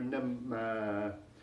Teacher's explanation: the first syllable is stronger, nemma, but the second syllable lasts longer